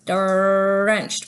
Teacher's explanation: For the D, it comes right behind our 2 front teeth on the alveolar ridge. This spot here, that bump behind your 2 front teeth.